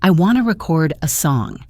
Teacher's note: Now, as a verb, I want to record a song. The stress is on chord.